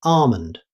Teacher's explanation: In American English, many speakers don't pronounce the L at all and simply say almond.